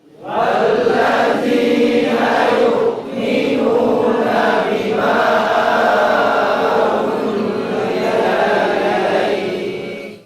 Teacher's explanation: Huruf ain yang berharokat dhammah bertemu dengan waw, huruf mad, maka dipanjangkan.